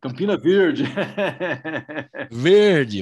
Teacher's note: Eu falo esse R retroflexo.